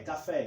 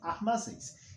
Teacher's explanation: Como é a última sílaba mais forte, a sílaba tônica, chamamos de oxítona.